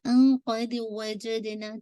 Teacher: ان کے بعد نون کے بعد قاف آ رہا ہے، ان قید وجدنا. ٹھیک ہے، نون ساکن کے بعد قاف ہے تو آپ کا اخفا ہوگا.